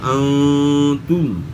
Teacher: اب ان کی مثالیں جو ہیں اس طرح انتم، نون ساکن کے بعد حرف تا ہے، یا نون ساکن میں اخفا کے ساتھ غنہ ہوگا